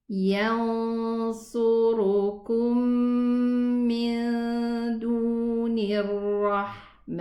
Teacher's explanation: And then we have here ikhfa with the letter sad. The letter sad is elevated, and the letter ra is also elevated.